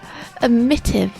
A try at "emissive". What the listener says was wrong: there's no tease and emissive it's emissive